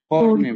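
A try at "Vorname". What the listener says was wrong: নেম না কিন্তু নামে।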